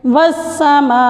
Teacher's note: وقف کرتے وقت حمزہ کو ہم ساکن کر دیں گے